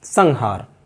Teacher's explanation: हा जो है वो कंठ से बोला जाता है, और कंठ से उच्चारित पंचम वर्ण ङा है